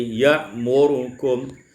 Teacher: Pada ayat yang ke-80, ya'murakum, ibdalul hamzati alifan wa iskanur ra, ditukar hamzah itu alif dan disukunkan ra menjadi ya'murukum.